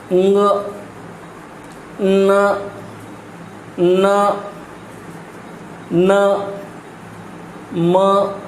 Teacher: तो इस नाक से ही ध्वनि कुछ मात्रा में आवाज़ जो है, ये हवा जो है वह नाक से ही बाहर आ रही है, अनुनासिक ध्वनि कहते हैं।